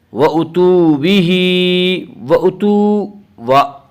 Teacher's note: وَأُتُوا بِهِ وَأُتُوا وا مدہ وہ واو جو ساکن ہو اور اس سے پہلے پیش ہو، وا مدہ کو ایک الف کے برابر کھینچ کر پڑھیں گے